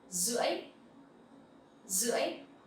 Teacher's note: Here, the R sound, you will pronounce like Z sound. It's okay. You can actually say R, but it's not really necessary, especially I'm from the north.